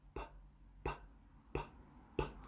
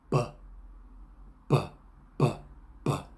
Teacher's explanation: Can you feel any difference between p and b? On b, there's vibration. Not a lot, a little vibration, but it's there.